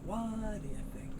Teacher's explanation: You have the T and the D, so you're just going to hear one soft D sound.